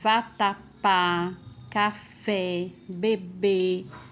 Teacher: todas essas palavras aí são classificadas como oxítonas porque tem como sílaba tônica a última